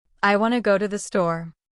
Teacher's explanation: That natural flow with reduced sounds like w to instead of want to is how native speakers really talk. Learning to copy this rhythm will make you sound more fluent instantly.